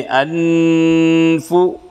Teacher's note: میں سے فا آئی ہے، اقفا حقیقی ہوگا، اقفا کے معنی نون کی آواز کو ناک میں چھپا کے پڑھیں گے جیسے انفو، فا کے اوپر پیش کی حرکت ہے، معروف پڑھیں